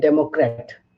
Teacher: the stress is on the first syllable in democrat